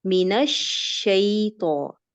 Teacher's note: شین کے اندر صفت تفشی پائی جاتی ہے، خصوصاً جب یہ مشدد حالت میں ہے. اس کو ہم اس کی تفشی کو ادا کریں گے من الشیطان.